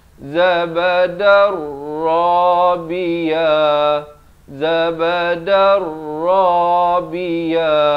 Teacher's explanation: di sini idgham bila gunnah, daripada zabadan jadi zabadar rabiya